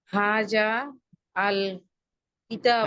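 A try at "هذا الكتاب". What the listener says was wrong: হাজাল, মিলিয়ে বল।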